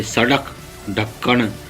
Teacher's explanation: एक झटके से बोले जाते हैं। इसलिए इनको उत्क्षिप्त कहा गया है। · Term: उत्क्षिप्त व्यंजन